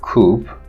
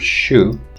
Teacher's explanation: Labialization can be secondary articulation in the case of consonants like coop, or in the word shoe, you labialize sha.